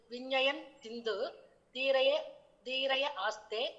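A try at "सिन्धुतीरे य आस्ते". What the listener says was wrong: தீரே. சிந்து தீரே ஒரே வார்த்தை, கடற்கரையில் அப்படின்னு சொல்ற மாதிரி. சிந்து தீரே. ய ஆஸ்தே. ஆமா ஆமா தீரேய அப்படி படிக்க முடியாது. ய ஆஸ்தே.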